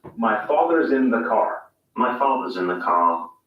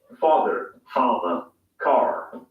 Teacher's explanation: english father ends in a simple schwa vowel like father and in car the vowel sound is lengthened in place of the r sound